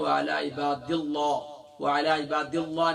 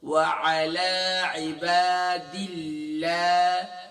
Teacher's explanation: ہم نے اللہ کے لام کا یہ رول پڑھا تھا کہ جب بھی اللہ کے لام سے پہلے زیر ہوگی تو اللہ کے لام جو ہے لائٹ ہوگی